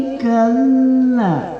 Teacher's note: Jadi ulaika itu panjangnya 4 sampai 5. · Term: jais